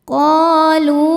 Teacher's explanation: Sebab ada alif yang didahului baris fathah. Cara bacanya huruf qof ini panjang dua harakat. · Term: mad thobi'i zohiri